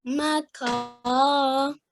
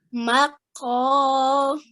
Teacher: So in this case, we don't say ka, we say qa. So in order to do it, you have to round your lips as well. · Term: thick sounding letter